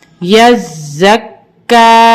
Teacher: यज़क, काफ खड़ा ज़बर का, यज़क्का। इसको हम ज़ा को भी और काफ को भी सख्ती से पढ़ेंगे क्योंकि दोनों मुशद्दद हैं